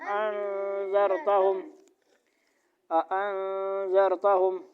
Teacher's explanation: اخفاء ہو رہا ہے، کہاں پہ ہو رہا ہے، ادھر نون ساکن پہ